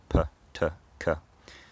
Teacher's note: There's a build-up of air, and then there's a burst when that air is released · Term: plosive consonant